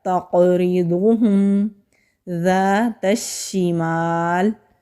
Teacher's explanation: शीन के ऊपर तशदीद है तो मज़बूती से अदा होगा। मीम के ऊपर ज़बर है, आगे खाली अलिफ है, अलिफ मद्दा है, एक अलिफ के बराबर खींच कर पढ़ेंगे।